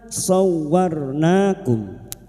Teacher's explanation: Masuk pada huruf wau yang bertasdid. Hanya masuk tanpa ditahan lama-lama